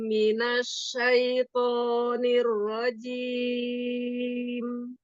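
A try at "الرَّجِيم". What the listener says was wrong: Niro. Kasih roknya tebal lagi.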